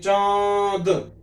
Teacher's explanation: अनुस्वार मुख और नासिका दोनों से बोला जाता है, जैसे चांद, तो मुंह और नासिका से दोनों से आवाज निकल रही है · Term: अनुनासिक